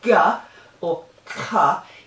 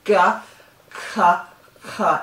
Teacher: you can feel how the back of the tongue is hitting the roof of the mouth